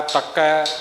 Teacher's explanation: ਤਕੈ ਤਤੇ ਦੇ ਉੱਪਰ ਥੋੜਾ ਜਿਹਾ ਵਜਨ ਦੇਣਾ ਹੈ।